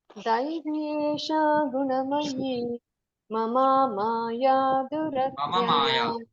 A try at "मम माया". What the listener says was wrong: मम माया, ममा माया नहीं, मम माया।